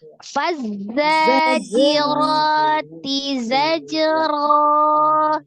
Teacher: Zainya ada sifat as-safir, zanya dibaca dua harakat ya. Jiro, ro juga dua harakat.